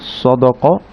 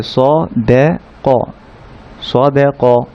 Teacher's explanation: কফের উপর ফাতহা দিয়ে ক, স দে ক। এখানে সটা মোটা স, কফটা মোটা ক, মাঝখানে দালটা হচ্ছে পাতলা, তো স দ ক বলে ফেলতে পারি আমরা অনেকে, স দ ক, কিন্তু সেটা ভুল হবে, দাল দালি।